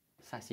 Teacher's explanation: Quem é a sílaba forte de saci? É o si, não é isso? Então ela é uma oxítona terminada em I.